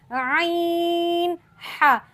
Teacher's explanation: वस्त हलक यानी हलक का दरमियान वाला हिस्सा जिससे दो हुरूफ ऐन और ह निकलते हैं। ऐन ह ऐन और ह बाज़ औकात ये हरूफ सही नहीं निकलते। · وسط حلق، یعنی حلق کا درمیان والا حصہ، جس سے 2 حروف عین اور حا نکلتے ہیں